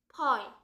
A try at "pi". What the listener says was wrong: 뭔 파이야 파이는. I가 E 되고 있는데.